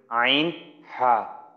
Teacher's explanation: দুই নাম্বার মাখরাজ হলকের মধ্যখান হইতে